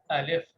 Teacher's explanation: آواز حمزہ کے مخرج سے یعنی حلق کی جڑ سے شروع ہو رہی ہے